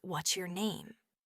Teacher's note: for clear statements or which questions like what's your name, your voice will have a falling intonation at the very end